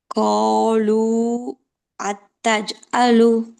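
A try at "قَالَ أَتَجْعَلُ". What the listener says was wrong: ஆலு அத்தஜ்அலு. ஏன் அந்த இடத்துல ஒரு பாஸ் வருது? அத்த அத்த அந்த இடத்துல ஏன் ஒரு பாஸ் வருது?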